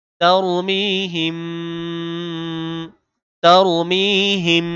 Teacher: মিম সাকিনের পরে যদি বা থাকে তাহলে এটাও গুণনা করতে হয় তারমিহিম তারমিহিম এই যে আওয়াজ আটকে রাখলাম এটাই গুণনা হিম তারমিহিম